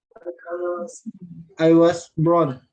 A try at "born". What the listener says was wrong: Tadi sudah saya dengar brown atau born ya. Bukan brown ya, bukan brown. Nanti brown itu coklat ya. was brown, nanti saya dilahirkan coklatnya. Saya coklat. I was born, bukan brown. Ya, R-nya hampir nggak kedengaran. I was born.